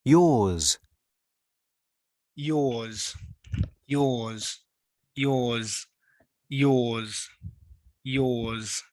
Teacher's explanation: i think i can feel some vibration in my throat